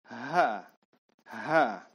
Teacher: Tempat keluarnya berdekatan dengan huruf alif. Tapi H, dia keluar dengan dorongan udara dari dalam.